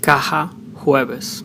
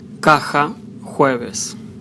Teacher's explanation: Letter J sounds mostly strong in Spanish from Spain and Argentina and Uruguay, and most times soft or softer, as an H in house in Latin America accent